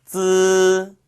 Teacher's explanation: 이 쯔 발음은 혀 끝을 윗니 뒤쪽에다가 대고 그 사이로 공기를 내보내면서 발음하시는 거였죠